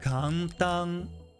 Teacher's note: So you almost need to hold a bit when you pronounce the standalone 'n' in Japanese.